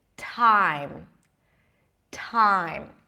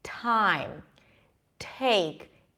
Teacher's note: the T's in the beginning of words are aspirated that means that it feels like there is a little H right after time time now try it with me time take it's not